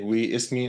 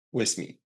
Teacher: the way the last vowel of we sometimes connects to the first vowel of the next word